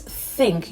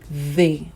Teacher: the pronunciation you give to think is different from the pronunciation you give to they. So they is more vibrant. It has some kind of vibration in it.